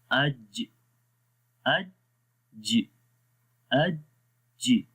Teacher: ठीक है, गौर से देखें, जब हम آواز چھوڑیں گے، کلکلا کریں گے، تو ان میں اس جگہ میں گیپ آ جائے گا. زبان کا درمیان والا حصہ اور تالو کا درمیان والا حصہ جو ہے اس میں گیپ آ جائے گا. یہ کلکلا کی وجہ سے آتا ہے، اور جب ہم کلکلا اس میں کر دیتے ہیں تو پھر کیا ہوتا ہے، پھر وہ حرف آسانی کے ساتھ پڑھا جاتا ہے، وہ دباؤ ختم ہو جاتا ہے.